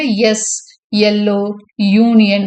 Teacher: ஹார்ட் பேலட்டுக்கிட்ட போறதுனால இது பேலட்டல் sound.